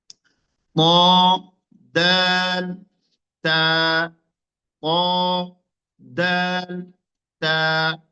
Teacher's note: জিহ্বার আগা এবং সামনের দুই দাঁতের গোড়ার সাথে লাগিয়েছি